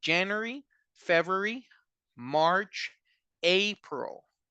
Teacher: All of these were the strong part of the word, the stress part of the word was at the beginning.